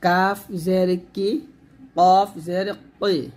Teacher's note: কাফ পাতলা কফ মোটা